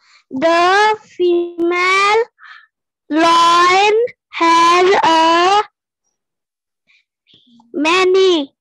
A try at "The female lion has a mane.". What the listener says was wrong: Many to nahi hai beta, M-A-N-E. Many to M-A-N-Y hota hai, many. The female lion has a mane.